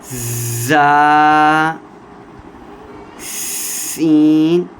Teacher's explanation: زا اور سین سیٹی والے حرف ہیں، سیٹی لگا کر پڑھیں گے